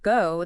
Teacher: So you start with rounded lips and finish with them tighter, more closed.